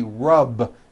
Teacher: So for example, the word rub ends with a voiced B. Rub. Today I rub.